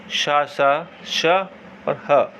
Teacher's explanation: इन वर्णों के उच्चारण करते समय हवा रगड़ खाकर एक प्रकार ऊष्मा से उत्पन्न करती है, तो इसे ऊष्म व्यंजन कहते हैं।